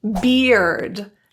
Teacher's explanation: This has the E vowel, as in the vowel that you would hear in the word me.